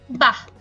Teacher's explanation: বিস্ময়সূচক শব্দে বিসর্গ এর উচ্চারণ অর্ধ হ এর মতো, যেমন বাহ, এই বিসর্গ যদি কোনো শব্দের শেষে থাকে তাহলে অবশ্যই আমাদের এরকম অর্ধ হ এর মতো উচ্চারণ করতে হবে।